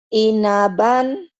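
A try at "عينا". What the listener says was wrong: Ah, ainaban. Ainnya yang kurang kurang kelihatan. Ain. Ainaban. Ainaban.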